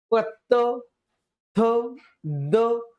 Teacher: त थ दाताकडे आपली जीभ येते आणि दाताचा वापर आपला या व्यंजनांचा उच्चार करताना होतो . ज्याच उच्चार स्थान आहेत दात आहेत. तर त गटातील वर्ण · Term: दंत्य वर्ण, दंते वर्ण